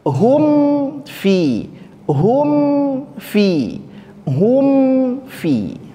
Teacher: bibirnya terlebih dahulu karena apa Karena dekat sekali dari segi makhrat mim sukun di kedua bibir sedangkan Fa ujung gigi seri atas ditempelkan ke bibir